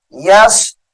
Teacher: با کو ظاہر کریں گے قلقلہ کی وجہ سے